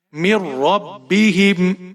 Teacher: نون ساکن نہیں پڑھیں گے، میم کو را کے ساتھ ملائیں گے اور را کو موٹا پڑھیں گے. میر، را کو با کے ساتھ ملائیں گے، با کے نیچے زیر ہے، بغیر کھینچے پڑھیں گے.